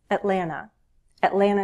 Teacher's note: you may hear that second T dropped sometimes